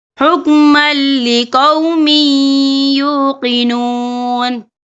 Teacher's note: تو یہاں پر ادغام ہوگا، تو ہم اسے تھوڑا سا غنی کے ساتھ پڑھیں گے۔